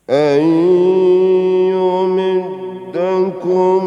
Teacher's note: nun mati ketemu ya idgham bi gunnah. Jadi dengungkan itu satu alif